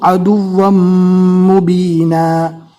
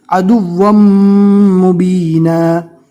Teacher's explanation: دو زبر کی تنوین کو میم سے ملائیں گے اور میم کو گنہ کے ساتھ پڑھنا ہے